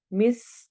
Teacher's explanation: सीन सीटी वाला हर्फ है, ये आवाज आएगी।